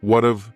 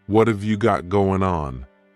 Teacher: what and have are going to be pushed together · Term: contraction